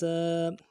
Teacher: سیٹی والا حرف باریک کرنا ہے اور الف مدہ ایک الف دال میں کھینچنا ہے. سین الف زبر سا.